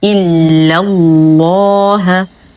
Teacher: إلا الله، حرف المد يسقط بسبب التقاء الساكنين. اللام في اسم الجلالة جل في علاه مغلظة لأنها سبقت بفتح